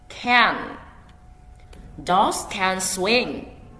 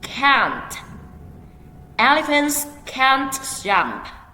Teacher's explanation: Notice that can is short and the vowel sound is eh.